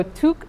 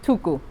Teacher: you have to insert a vowel after it and it looks the language looks to the vowel before it and just inserts a copy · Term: copy vowel insertion